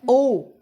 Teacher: ओष्ठ कंठ भी है और ओष्ठ भी है। तो देखिए कंठ और ओष्ठ को मिला रहा है, अंदर से आएगा ओ, होंठ का देखिए बनावट ओ हो रहा है ना, ओ होंठ भी आ रहा है, कंठ भी है, अंदर से एक बार होंठ पर आ गया ना ओ। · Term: कंठोष्टे वर्ण